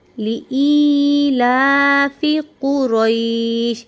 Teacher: ई को हमने थोड़ा सा लंबा करना है क्योंकि या साकिन है। या साकिन से पहले अगर ज़ेर होगी, इसको हुरूफ मद्दा का हर्फ कहते हैं, उसको हम लंबा करेंगे।